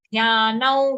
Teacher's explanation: Okay, now here after na, on na there's an anuswar. For that we have to say anunasik or nasal sound va.